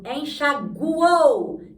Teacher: Eu pronuncio o U, que é uma semivogal, o O, que é uma vogal, e o U, que é uma semivogal